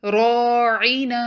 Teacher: اس word میں 2 بار الف مد آ رہی ہے، را پر فتحہ ہے تو را کو ہیوی پڑھیں گے اور 2 کاؤنٹ بھی پڑھیں گے، اور نون کے بعد الف مد ہے تو نون کو بھی 2 کاؤنٹ پڑھیں گے۔